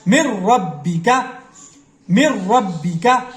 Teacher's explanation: یہ نون ساکن کے بعد را، یہ لام کی آ گئی، یہ را کی مثال آ گئی. نون ساکن کے بعد حروف یرملون کا را شدہ آ گیا تو یہاں پہ بھی ڈائریکٹ اس میم کو را کے ساتھ شدہ را کے ساتھ ملائیں گے بغیر غنہ کیے